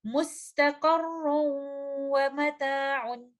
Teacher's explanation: میں نے ان دونوں چیزوں کا دھیان رکھنا ہے کہ نہ تو میں اس کو اظہار کے ساتھ پڑھ دوں، اور نہ ہی میں اس کو مرج کر دوں غنہ کے بغیر۔ یہاں پر ہم نون ساکنہ کا ادغام کریں گے، وہ ادغام ادغام ناقص ہوگا اور ادغام ود غنہ ہوگا، اور ان الفاظ کی ادائیگی اس طرح سے ہوگی، مستقر ومتاع۔